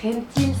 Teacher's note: simplemente que la L no se dice y se dice la I